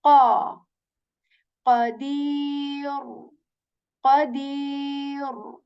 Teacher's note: Okay, so this letter here is qaf. Okay, so qaf letter is articulated when the back part of your tongue, it touches the soft palate with strength